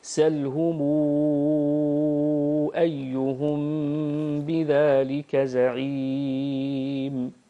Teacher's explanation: والمد الصلة سلهم، سلهم يكون بمقدار 6 حركات. ميم الجمع إذا أتت بعدها همزة القطع، فورش رحمه الله يمدها بمقدار 6 حركات.